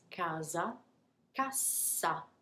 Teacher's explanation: that s is pronounced more like a z it's a single s